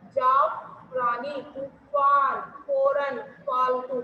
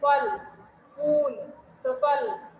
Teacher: फ को बोलते समय दोनों होठों को मिलाया नहीं जाता। जैसे जाफरानी, तूफान, फौरन, फालतू, मतलब दोनों जो हमारे होठ होते हैं उनको मिलाया नहीं जाता, जबकि हिंदी में फ वर्ण के उच्चारण में होठ आपस में मिल जाते हैं।